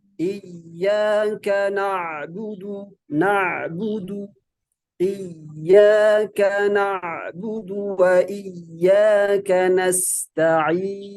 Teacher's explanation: Huruf ainnya nggak boleh terhenti ya. Dia harus menyambung ke huruf berikutnya. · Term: Ain yang sukun, ain yang sukun